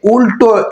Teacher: উল্টো এই ল কিন্তু আবার দন্তমূল থেকে উচ্চারিত হচ্ছে না। এটা হচ্ছে আমাদের মুর্ধা থেকে। তাহলে একই ল কোথাও দন্তমূল কখনো আবার মূর্ধ।